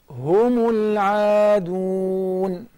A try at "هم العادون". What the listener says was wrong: And the عين is very thin. You cannot say ah. هم العادون. هم العادون. And look at the ألف, the مد. After the عين, because the عين is thin, is مرققة, the alif of المد has become thin automatically. So you say, العادون, the whole word is مرققة.